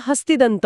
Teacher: जेव्हा पहिल्या शब्दाच्या शेवटी न असतो आणि त्याच्यापुढे एखादा तद्धित प्रत्यय जोडला जातो तेव्हा तो न पूर्णपणे अदृश्य होतो जसे की हस्तीन आणि दंत हे दोन शब्द एकत्र आले की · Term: न च्या लोपाचा नियम